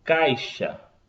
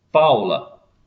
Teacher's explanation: Do mais forte para o mais fraco, descendo. Então, ditongo decrescente, vogal, depois semivogal. Vogal a mais forte, semivogal a mais fraca. Exemplo, caixa, A vogal e semivogal.